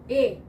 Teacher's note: क्योंकि ए में अ और ए की आती है, अ और ई मिलकर ए बनता है ना। तो संयुक्त स्वर वो होता है जिसमें 2 स्वर बनकर एक तीसरा रूप बनाते हैं, जैसे अ प्लस ई बराबर ए